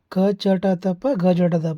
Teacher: ಅಲ್ಪಪ್ರಾಣ ಅಂತಂದ್ರೆ ಸ್ವಲ್ಪೇ ಉಸಿರಿನ ಸಹಾಯದಿಂದ ಉಚ್ಚರಿಸಲ್ಪಡತಕ್ಕಂತಹ ಅಕ್ಷರಗಳಿಗೆ ಅಲ್ಪಪ್ರಾಣ ಅಂತ ಕರೀತೀವಿ